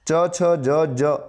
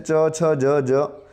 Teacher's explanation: જે આ અક્ષર આપેલા છે એ તાળવામાંથી બોલાય છે ચ જ એટલે તાલવ્ય તરીકે ઓળખાય છે